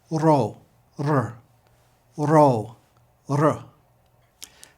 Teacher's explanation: Ro looks like an English P, but is pronounced like an English R, except that you tap the roof of your mouth with your tongue, like we do with the letter D in English, to make this sound. You don't have to roll it, but you do at least have to tap the top of your mouth.